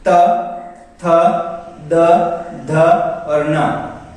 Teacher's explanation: ये 5 वर्ण 5 के 5 दंत में आते हैं, दंत से दांत की सहायता से बोले जाते हैं। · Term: दंत्य व्यंजन